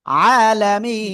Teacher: হ্যাঁ, এরপরে তারপরে দেখেন এখানে আরেকটা বিষয়, তার আগে এক আলিফ মাদ, তো এক আলিফ মাদের পরের অক্ষরে আমরা থেমে পড়লে এক আলিফকে তিন আলিফ টেনে পড়বো